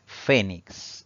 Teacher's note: Esta palabra tiene 2 sílabas. Al pronunciarla, la mayor intensidad o fuerza de voz recae en la penúltima sílaba contando de derecha a izquierda. Eso quiere decir que es una palabra grave.